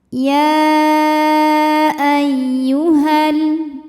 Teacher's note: Masuk ke ya tasydid, ini dibunyikan dengan naber. Jadi kita naikkan intonasi suaranya, ya. Tidak perlu ditahan. · Maka ya-nya dipanjangkan boleh empat, boleh lima harakat. Jadi walaupun ini mad thabi'i dengan hamzah-nya disatukan penulisannya, secara makna berbeda. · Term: mad jaiz munfasil